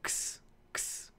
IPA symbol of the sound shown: ks